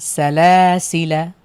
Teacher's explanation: শেষে এক আলিফ টান হবে না শুধু আমরা হরকত দিয়ে পড়বো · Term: আলিফে জায়েদা